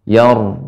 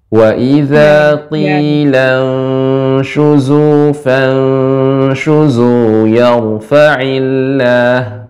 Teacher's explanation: Yar tapi yanya tipis rnya yang tebal